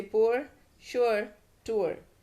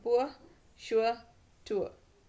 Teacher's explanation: American अगर pronunciation होता है तो आर, जो लास्ट वाला जो आर है इनमें, वो आर्टिकुलेट होता है, ब्रिटिश में नहीं होता है।